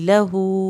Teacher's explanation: लहू पे हा उल्टा पेश को हमने खींच के पढ़ना है।